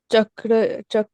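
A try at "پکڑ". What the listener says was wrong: नहीं, first letter is पे, नॉट चे।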